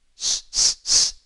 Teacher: You can't sing an octave on s, the S in soya, so it's not a voiced sound.